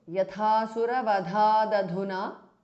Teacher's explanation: The th in the end changes to d because of sandhi.